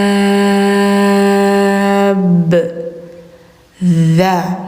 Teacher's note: lidah ujung tempel gigi atas kayak digigit